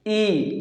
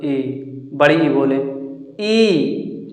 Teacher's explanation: ई देखिए ऐसा लग रहा है जैसे आगे हम जीभ को दबा रहे हैं। ई ई यानी छोटी ई बोल रहे हैं, ई बड़ी ई बोले ई, यानी कि जीभ को हम लोग दबा रहे हैं, तो आगे वाले भाग से दबा रहे हैं, तो ये क्या हो गया, अग्रस्वर हो जाएगा, यानी जीभ के आगे वाले भाग से।